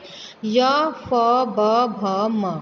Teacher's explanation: ओष्ठ्य व्यंजन जो ओंठों से बोले जाते हैं, यानी जिनको बोलते समय हमारे जो ओष्ठ हैं वो स्पर्श करते हैं।